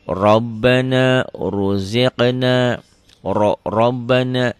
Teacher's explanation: Ro ini berbunyi O ya kalau berbaris fathah. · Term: tebal